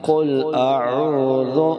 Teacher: آگے ذال ہے، اس کو زا میں چینج نہیں کرنا، ذال کو صحیح ادا کرنا ہے۔ قل اعوذ نرمی سے ادا کرنا ہے۔